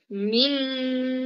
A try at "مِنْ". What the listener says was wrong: দেখে বলো মিং. মিম হবে না, মিং. নাকে নাকে যাবে মিং. হুম, মিং. দুই ঠোঁট মিলবে না। মিং. মিম জের নুন জের কি হবে?